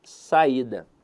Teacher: Veja que a sílaba tônica dela está na penúltima sílaba. Então, a verdade é que a palavra saída é uma paroxítona.